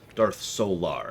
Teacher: you gotta like emphasize the second syllable there